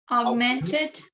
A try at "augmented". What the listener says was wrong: You don't have to pronounce the G. It's like it's there, but it's not there. you know, augmented. You don't pronounce G, you know?